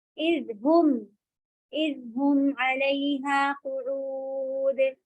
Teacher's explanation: ہم کہنے کے لیے ہو کے لیے ہوٹوں کو گول کریں گی، میم کے طرف، میم پر آتے آتے سیدھے ہو جائیں گے